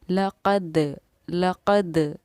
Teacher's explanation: यहाँ पर देखिए दाल पर क्योंकि जज़म सकून है और जब क़ाफ़ तौ बा जीम दाल इन हुर्फ़ों में से किसी कोई भी ऐसा हुरूफ आए और उन पर जज़म सकून हो तो वहाँ पर हमारा क़लक़ले का कायदा जारी होता है, यानी आवाज़ हमारी लौटती है। लक़द लक़द दाल साकिन पर आवाज़ का ये लौटना हमारा क़लक़ला करना कहलाता है